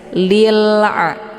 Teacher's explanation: lamnya dibunyikan secara jelas dan tipis ya Lila Jangan di tekan kemudian dilepas ini sehingga keluar bunyi